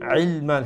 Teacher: আইন গলার মধ্য অংশ থেকে উচ্চারণ করবা